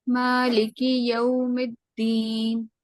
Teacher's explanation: मीम को हम 2 count stretch करेंगे क्योंकि इसके ऊपर खड़ी जबर है।